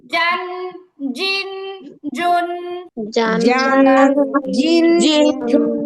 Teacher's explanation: জিহ্বার মাঝখান উপরের তালুর সাথে লাগিয়ে 6 নাম্বার মাখরাজ